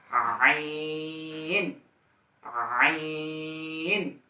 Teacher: পড়বেন ইনশাআল্লাহ। এরপর আইন, আইন একই মাখরাজ হা থেকে, অর্থাৎ মধ্যভাগ, কণ্ঠনালীর মধ্যভাগ থেকে আইন উচ্চারণ হবে , অর্থাৎ আইন, আইন এখান থেকে বলবেন না, এই জায়গা থেকে